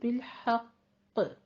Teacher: حق قاف کو آپ نے تشدید کے ساتھ تھوڑا سا رک کر پھر وقف کرنا ہے